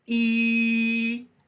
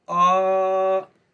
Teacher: The tongue is high, E, the tongue's low, ah.